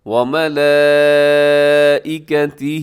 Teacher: اس میں کیا ہے کہ بڑی مد ہے جسے مد متصل کہا جاتا ہے